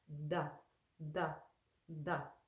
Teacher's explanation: we also put the tongue against the front teeth and draw it back